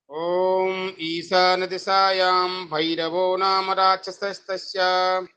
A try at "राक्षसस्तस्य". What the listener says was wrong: राक्षसस नहीं कहना, राक्षसस्तस्य।